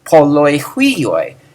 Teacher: Polus has the accent on the last syllable, so it's actually just a springboard onto whatever follows it.